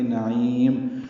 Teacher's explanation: عین وسط حلق سے ادا کریں گے